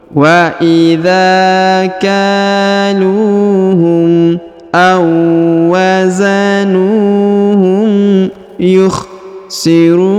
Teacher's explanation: Awazanuhum. Huruf nu dipanjangkan 2 harokat karena di depannya terdapat waw sukun